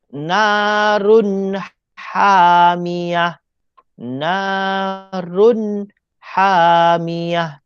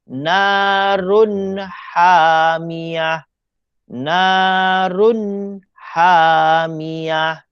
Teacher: Narun hamiyah. Tidak ada dengung. Kena jelas baca run. R-U-N. Run. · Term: izhar halki